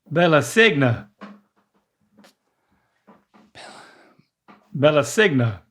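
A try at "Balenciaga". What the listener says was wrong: But there's an N in there. Like, just say the first part. B-A-L-E-N.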